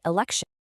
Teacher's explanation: Students identify the suffix is ion and they realize that the final t sound in elect morphs into a shh sound in election